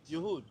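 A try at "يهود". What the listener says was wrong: Yahoo. Not with a D. Yahoo.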